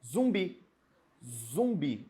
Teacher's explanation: Eu não pronuncio o u e o m separadamente ele saem juntos um só som isso é um dígrafo vocálico apenas um som duas letras que